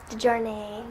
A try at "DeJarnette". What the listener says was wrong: The T's aren't silent.